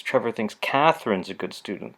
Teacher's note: Cath is getting more stress than it normally would. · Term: focal stress